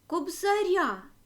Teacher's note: наголошене закінчення я ар не наголошено